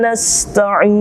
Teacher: Mad tabi'i kita temukan kembali, namun dia berada pada akhir ayat, maka dia berubah menjadi mad arid lis-sukun. Dibaca 2 harakat, boleh 4 sampai 6 harakat.